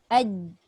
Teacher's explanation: Dia tidak ada suara yang terlepas. Okey, dia tertahan. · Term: suara tertahan